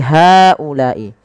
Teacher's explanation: Ah kemudian digabungkan menjadi ha ulai. Maka pada lafal haulai hanya dipanjangkan empat harakat karena ia mad jaiz.